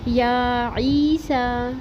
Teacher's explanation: سین کے اوپر کھڑا زبر اور مد منفصل 2 سے 3 الف برابر لازمی پڑھیں گے